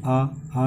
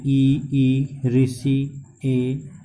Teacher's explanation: बोलते समय हमारे ओष्ठों की आकृति गोल ना बनी, जैसे आ में नहीं बनती, बड़ा आ में भी नहीं बनती, ठीक है। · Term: अवृत्ताकार